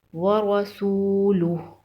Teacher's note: اور گول ہا پہ الٹا پیش ہے، الٹا پیش کو ایک الف کے برابر لمبا کر کے پڑھیں گے۔ عبدہ را کے اوپر زبر ہے، را کو موٹا پڑھیں گے